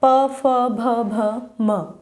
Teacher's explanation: होठ आपस में भिड़ते हैं ना जब हम बोलते हैं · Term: होस्ट से